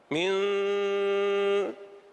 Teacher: مع الأول، فاللسان أسبق من الشفتين، فحينما يرتفع اللسان يتحول الصوت إلى نون مخفاة، من، حتى وإن كنت قد أطبقت شفتيك، من، أيضا هذه نون.